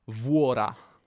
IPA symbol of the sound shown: vu